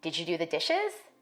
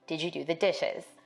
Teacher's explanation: African-American speakers may be more likely to ask a yes-no question with a level tone or a falling tone. For white speakers, we expect a rising tone in questions like these.